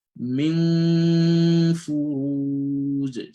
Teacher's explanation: So the gunna is complete and you have to do it for 2 counts. So gunna is lasting for 2 counts, right?